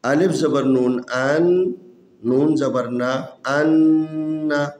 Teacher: غننے کا مطلب یہ ہے جب ان حروف کو جب ادا کریں تو آواز کو ناک میں لے کے جانا ہے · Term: غنہ